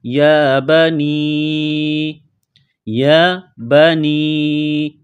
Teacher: یا کو ایک الف کے لمٹ میں کھینچنا ہے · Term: مد